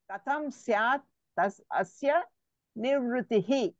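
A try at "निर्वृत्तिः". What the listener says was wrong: నిర్వృత్తి, నివృత్తి కాదు, నిర్వృత్తి. విడిగా అనండి, నిర్వృత్తి అనండి, నిర్వృత్తి అనండి.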